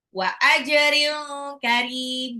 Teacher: Wa ajrin karim jimnya itu adalah qalqalah